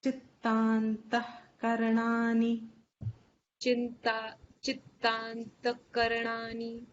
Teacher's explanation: The visarga can be silent here because it's followed by ka.